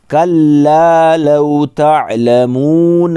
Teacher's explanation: لام کو ڈبل اور ایک الف کے برابر کھینچیں گے چونکہ الف مدہ ہے